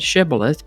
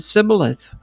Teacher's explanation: The Gileadites pronounced the word with the sh sound shibilith. But the Ephromites pronounced it cibilith without the sh sound.